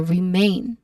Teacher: That's a diphthong sound. So we stress on the second syllable main.